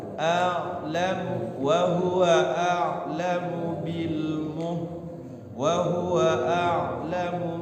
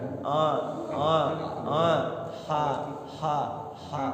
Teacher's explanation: Jadi kalau ain itu dari tengah-tengah tenggorokan satu makhraj dengan ha ya